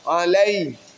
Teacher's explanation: Sifat lin. Karena fathah bertemu dengan ya sukun.